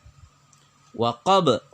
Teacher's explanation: ba-nya dibaca bergetar atau ada pantulan, disebut qalqalah kubra